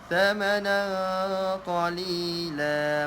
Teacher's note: Jangan lupa keluarkan lidah. Dia bukan samana, bukan sa tapi tha. Keluarkan sedikit lidah.